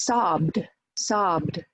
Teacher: So it sounds like d after voice sounds. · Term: final ED